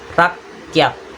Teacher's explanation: Cara kita melakukannya ini bunyi dihasilkan karena pita suara di tenggorokan atau glotis atau celah suara yang menutup rapat lalu dibuka tiba-tiba, seperti contohnya bunyi hamzah, disebut juga hentian glotal.